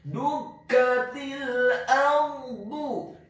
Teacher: Dukatil ardu, kata ardu, huruf alif atau hamzahnya dibaca tipis, fathah 1 harokat. Huruf ra-nya dibaca sukun, isti'la wa tafkhim, bergetar dan tebal. Karena sebelum huruf ra yang sukun adalah huruf yang harokatnya adalah fathah, dalam hal ini adalah huruf alif atau hamzah.